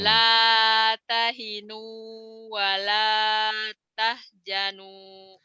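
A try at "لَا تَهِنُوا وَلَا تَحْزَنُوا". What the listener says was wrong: Jimnya orang. Bukan jimnya itu Zai. Z. Orang Sunda kan nggak mau susah ngomongnya kadang-kadang. Jim, Zai dibacanya Jim, pajaja padahal pajaza, jazauhum. Zai ya. La tahinu, La tahinu wa la tahzanu. Kayak suara lebah. Za, tahzanu. Kalau jim kan nggak gitu. Kalau zai kan za, 007, nggak ada ngecasnya. Ini keras kalau kalau jim. Ini zai rapuh. La tahinu wa la tahzanu.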